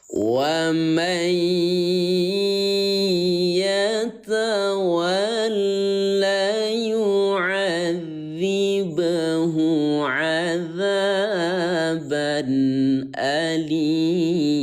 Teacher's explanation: idgham itu artinya memasukkan nun sukun kepada ya yang bertasdid.